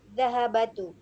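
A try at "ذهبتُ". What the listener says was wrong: Dhahabatu. Itu bukan dhahabatu tapi dhahab. Dhahab. Ya, di sini harusnya sukun ya. Kalau yang di buku ibu-ibu ada kata dhahabanya itu ba-nya itu fathah, itu salah ya. Itu harusnya sukun. Dhahab. Ya, dhahabtu. Harusnya itu sukun ya.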